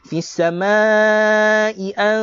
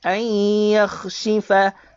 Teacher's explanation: Kena dengung sambil masuk kepada huruf ya. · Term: idgham bi ghunnah